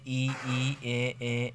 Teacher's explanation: जिन स्वरों के उच्चारण में जिह्वा का अग्रभाग सक्रिय होता है ऐसे उच्चरित स्वरों को अग्रस्वर कहते हैं हिंदी में ई ई ए ए अग्रस्वर है ख मध्य स्वर